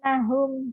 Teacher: Ditahan ada panjangnya dan ada dengung ke hidung. Itulah gunah.